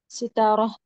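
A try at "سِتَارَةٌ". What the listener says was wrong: सितारा, जब वक्फ कर रहे हैं, हमको वक्फ नहीं करना है, हरकत को जाहिर करना है या एराब को जाहिर करना है। सितारतुन, सही माशाल्लाह, सितारतुन।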